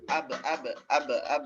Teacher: Kemudian abro, ba-nya qalqalah, jelaskan. Ab. Jangan malu-malu dikeluarkan pantulannya.